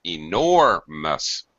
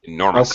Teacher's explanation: Please reduce the stress of the last syllable. Enormous. It's a very fast, unstressed syllable.